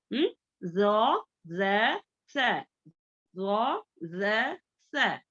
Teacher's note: इसमें buzzing sound नहीं आना, थोड़ी जुबान हमारी बाहर दिखना है, दोनों दांतों के दरमियान थोड़ी जुबान जो है बाहर दिखना है।